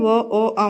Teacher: కంఠం పెదవి సాయంతో పలుకుతాం కాబట్టి ఓ ఓ ఔ ని కంఠ్యోష్ట్యాలు అంటారు